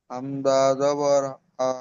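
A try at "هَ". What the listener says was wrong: হামজা নই হা জবার হা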